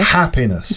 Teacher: Which one's the strongest? The first syllable.